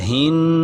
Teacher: نون پہ شد ہو تو کیا ہوتا ہے؟ آواز ناک میں لے جاتے ہیں، اسے غنہ کہتے ہیں